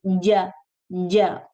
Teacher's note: You apply pressure on the middle of the tongue, with the middle of the tongue on the upper palate, the bony upper palate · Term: jim